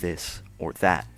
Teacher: eth, represents the voiced dental fricative, the, as in this or that.